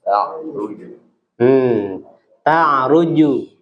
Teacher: Ingat huruf jim nggak boleh mendesis, satu keluar udah.